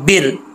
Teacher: अगर ज़ेर हो तो रा बरीक पढ़ा जाएगा